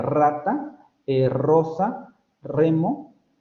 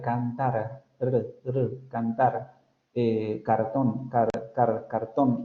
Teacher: luego tenemos las líquidas vibrantes, que serían la múltiple, la de rata, rosa, remo, y luego la vibrante simple, la de cantar, cantar, cartón, cartón, es una simple.